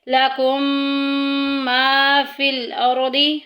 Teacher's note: لکم ما فی الارض، اور ویسے بھی یہاں پہ دیکھیں میم ساکن آ گیا ہے۔ میم ساکن کے بعد اگر دوسری میم آ جائے تو پہلی میم کو دوسری میں مدغم کر دیتے ہیں، ادغام شفوی کا قاعدہ جاری ہو رہا ہے۔